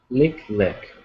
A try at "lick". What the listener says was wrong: Good, thank you. Well done.